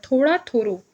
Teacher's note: ड तथा ल ध्वनियां ब्रज में र ध्वनि के रूप में प्रयुक्त होती है